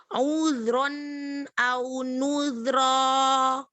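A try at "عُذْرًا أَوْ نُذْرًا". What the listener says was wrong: Zal yang kedua, rokhwahnya tambahkan seperti yang pertama.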